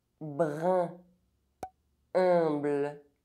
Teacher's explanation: UN and UM are pronounced [ε̃].